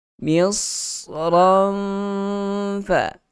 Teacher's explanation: Ada bunyi safir, ada bunyi desiran ataupun geseran dalam masa yang sama. Huruf sad itu ada sifat isti'la dan itbaq, kena tebalkan.